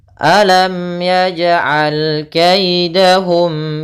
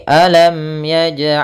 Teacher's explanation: ada mim mati harus dibaca dengan jelas tidak boleh ditahan